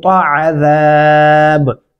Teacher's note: عین گلے سے ادا کریں با پہ کلکلا ہوگا